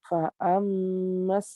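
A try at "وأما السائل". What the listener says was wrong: Bukan fa amma itu, wa ammas ya, wa ammas.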